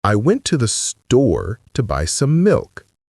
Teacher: Notice how natives emphasize the content words store and milk and rush through the function words to the sum. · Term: emphasis